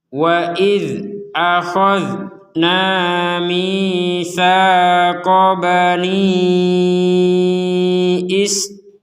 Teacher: Maka dzal sukun ini sekali lagi ditekankan tidak boleh dipantulkan. Tidak ada pantulan.